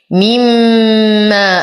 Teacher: لنا ألف ساكنة ما قبلها مفتوح فهو من الطبيعي حركتين. مما أسد الميم غنة أكمل ما تكون